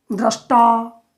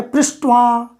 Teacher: जब त मूर्धा से उच्चरित होगा तो वह बन जाता है ट, क्योंकि ट का उच्चारण स्थान मूर्धा है। तो त के जगह ट का उच्चारण अपने आप हो जाता है।